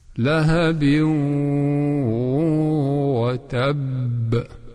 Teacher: Donc on dit que l'idgham naqis, incomplet. On a fait pénétrer le nun dans le waw, mais de façon incomplète.